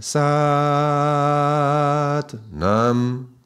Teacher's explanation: When we do sat long and nam short, we are actually making the first A long